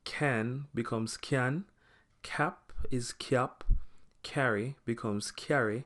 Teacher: it gets a dominant Y in the middle